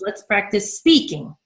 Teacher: So within the focus word, and really this applies to any word with 2 syllables or more, but particularly the focus word, you will have one syllable that gets the most stress, right? This is spee. And then the cornerstone of that stress syllable is the peak vowel sound, which gets heard the most, and that's the E vowel sound.